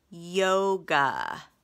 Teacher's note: long o it's just a normal open syllable but GA a it's an exception because it's an open syllable that is not a long a it is awah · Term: open syllable exception